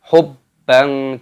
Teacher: Mala hubban, ada fathah tanwin, ini juga ada tasdidnya, maka dimasukkan dulu hubban. Kenapa ada fathah tanwin bertemu dengan huruf jim, hukumnya dibaca ikhfa